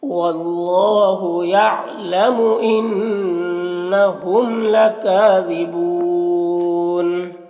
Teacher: یہلکون انفسہم، واللہ یہاں پر اللہ کے لام سے پہلے واو کے اوپر زبر ہے تو اللہ کے لام کو پر پڑھیں گے، کھڑا زبر ہے، ایک الف کے برابر کھینچیں گے اور اس الف کو نہیں پڑھنا ہے۔ یہاں پر نون مشدد غنہ ہوگا، میم میں اظہار شفوی ہوگا